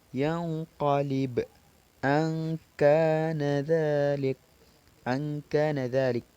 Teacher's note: Dan selanjutnya adalah ikhfa adna, ialah lebih banyak bunyi dengungnya daripada bunyi ikhfa'nya, dan hurufnya ada 2 yaitu qaf dan kaf.